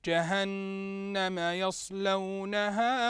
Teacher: جهنم يصلونها تلاحظ ان النون هنا نون مشدده بالفتح فلا بد ان يغني الحرف بمقدار حركتين